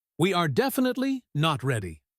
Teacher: At the start, emphasizes not ready.